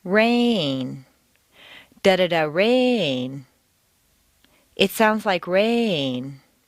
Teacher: make rain very Musical and put it on two notes